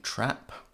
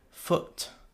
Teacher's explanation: and long ooh notice that in each short long pairing though it's not only the length or quantity that differs the vowels also have a different quality your tongue is not in exactly the same place when you say them